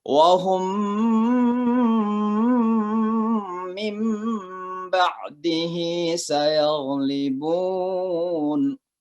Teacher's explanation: Biasa disebut juga dengan idgham mithlain atau idgham mithli. Jadi dua huruf yang sama, maka suara mim masuk ke huruf yang kedua. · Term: idgham mimi